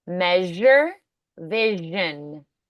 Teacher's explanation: There's also a slight backward movement of the tongue tip or blade toward the area just behind the alveolar ridge when you make these sounds.